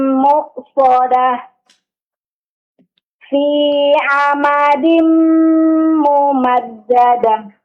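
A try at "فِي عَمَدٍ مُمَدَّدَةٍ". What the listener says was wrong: Ha sukun dijelaskan. Coba ulang yang terakhir, Bu.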